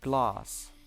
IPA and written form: glɑːs (glass)